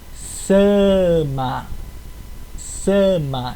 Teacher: o s do Tupi ele sempre tem som de s s mesmo entre vogais